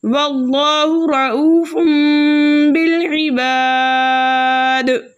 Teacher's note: آگے دال کا سکون عارضی وقف کی صورت میں آ رہا ہے، اس لیے یہاں پر مد بنے گی مد عارض وقفی جس کی مقدار 2/4 حرکت ہے، لیکن 6 حرکت کی مقدار کھینچ کر پڑھنا زیادہ بہتر ہے۔